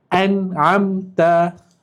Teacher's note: Nun mati bertemu dengan huruf ain. Jadi kita kena jelaskan. Jangan dengungkan. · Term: izhar halqi